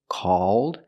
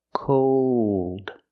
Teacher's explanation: Again, the first word, called, it's more open. Called, and it's back here.